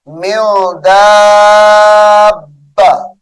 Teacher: میم نون زیر من، غنہ کریں گے، یہاں پر اخفا ہے